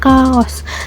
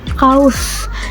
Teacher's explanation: kaos yang di Sunda diucapkan kaos, sedangkan di Indonesia sering jadi diftong kaus